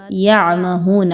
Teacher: ہا پیش واو ہو، تو اس کو 2 حرکات کے برابر لمبا کر کے پڑھنا ہے. واو مدہ کو مکمل ادائیگی کے ساتھ پڑھنا ہے.